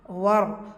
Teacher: ரா சுக்கூனுக்கு முன்னாடி ஃபத்தா வந்திருக்கிறனால அந்த ரா சுக்கூனை ஹெவியாக ஓதணும்.